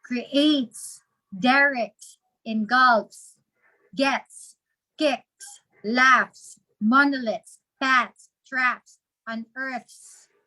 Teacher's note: So, the voiceless sound, the S after a voiceless sound would be pronounced as S. But in all the other endings, S should be pronounced as Z.